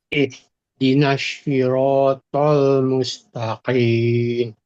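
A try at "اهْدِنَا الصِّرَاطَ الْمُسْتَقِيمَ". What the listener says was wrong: Ini bukan shin, bukan sh. Mulutnya nggak boleh bergerak. Ihdinas bukan shi, tapi tol.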